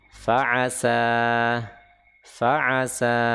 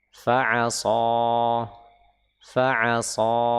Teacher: Sin dengan shad makhrajnya sama. Tapi sin dia istifal, sedangkan shad dia isti'la, sehingga terdengar tebal.